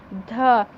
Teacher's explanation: ध स्पर्श, घोष, महाप्राण, दंत व्यंजन है।